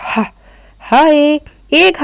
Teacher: ग्लॉटस में हा हलक से निकल रहा है ना